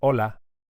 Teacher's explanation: You can hear that the initial H is silent.